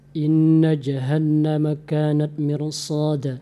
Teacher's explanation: Jangan terlalu terlalu bulat sehingga tidak ada angin. So, mirsada harus sedikit ada angin, dikeluarkan sedikit lagi anginnya. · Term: huruf sad